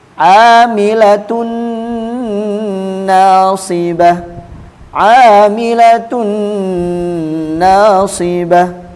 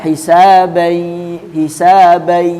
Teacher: Jadi apabila nun sukun dan tanwin bertemu dengan huruf ya nun mim mau, maka cara membacanya melebur dan mendengung